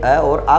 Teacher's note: कंठ से कौन कौन से स्वर बोले जाते हैं, अ और आ बोला जाता है।